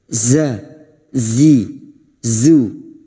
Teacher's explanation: huruf Zain memiliki sifat Rakha yaitu suara yang tidak tertahan atau terlepas · memiliki sifat Rakha yaitu suara yang tidak tertahan atau terlepas Zi makhrajnya terletak pada ujung lidah menempel ke ujung gigi seri bawah